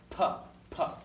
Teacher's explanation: this is a hard pup pup you hear the pressure huh do you hear that pressurized P sound